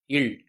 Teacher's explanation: இல் இது மேல்வாய் பல்லின் அடியை நாக்கின் ஓரங்கள் தடித்து நெருங்குறனால இல் பிறக்கிறது. இல் இது மேல்வாயை நாக்கின் ஓரங்கள் தடித்து தடவுவதால் பிறக்குது